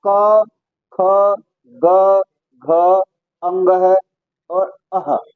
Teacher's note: जो केवल और केवल कंठ से बोले जाते हैं वे हमारे कंठ वर्ण कहलाते हैं